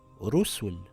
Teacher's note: the Ra has a dhamma. It reads rusul with a heavy Ra